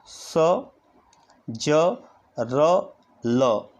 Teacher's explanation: वर्षय यानी दांतों के मूल भाग से जिनका उच्चारण होता है स, ज, र, ल